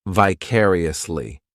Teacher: Then we have another great adverb, which is vicariously. This adverb has five syllables and the stress is on that second syllable, · This adverb has 5 syllables, and the stress is on that second syllable, vicariously. The third syllable, it's like that letter I just has that E sound, and the fourth syllable has the schwa, vicariously.